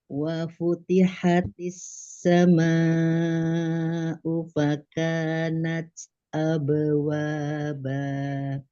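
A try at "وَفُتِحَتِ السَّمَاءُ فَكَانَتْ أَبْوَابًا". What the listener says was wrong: Ya, Masya Allah.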